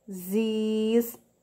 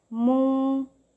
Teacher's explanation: Mas geralmente é pronunciado esse O com o sonzinho da letra U, mas é escrito com a letra O, tipo, desistindo, né? A gente fala com som de U, mas é escrito com a letra O